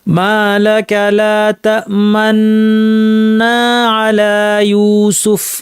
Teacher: তাসদিটা শুরু করার ঠিক একটু পরে ঠোটটা গোল করতে হবে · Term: ইসমাম